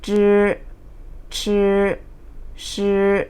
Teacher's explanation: ให้เราเอาปลายลิ้นแตะบริเวณเพดานแข็งแล้วก็เวลาออกเสียงให้ตวัดออกมานะคะ